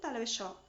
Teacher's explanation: ई, च वर्ग, च, छ, ज, झ, य तथा श का उच्चारण स्थान तालु होता है